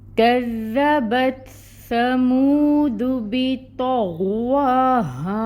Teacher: کاف ہے، ڈنڈے والی کاف ہے، باریکی سے ادا ہوگی، باریک ہوتا ہے یہ کاف، اور اس کے اوپر جو فتحہ کی حرکت ہے وہ 1 کاؤنٹ ادا ہوگی، اور کاف کو دال کے ساتھ ٹائٹلی جوائن کریں گے، دال کے اوپر تشدید ہے، ٹائم ٹیکنگ ہوگا، اور جو فتحہ کی حرکت ہے اس کو 1 کاؤنٹ ادا کریں گے۔